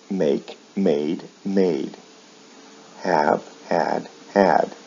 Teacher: the vowel sounds remain the same in the past and past participle but the final consonant sound is changed to a d